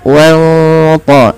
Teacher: nunnya disamarkan kepada huruf ta dan dia menebal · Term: ikhfa hakiki